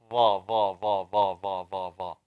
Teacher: Tip of the tongue touching the upper teeth.